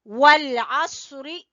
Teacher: स्वाद को पुर पढ़ना है